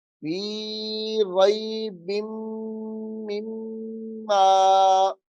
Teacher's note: میم 2 مرتبہ ہے تو دونوں مرتبہ ہی مشدد ہے تو غنہ کریں گے